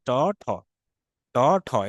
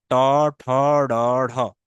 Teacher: জিহ্বার ডগাটা মূর্ধান্য, অর্থাৎ আপনার মধ্য তালুতে গিয়ে ঠেকবে।